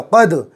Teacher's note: بڑا قاف ہے، بڑا قاف گلے سے نکالیں گے ، دال پر جزم میں، دال کو قاف سے ملاؤ، قد،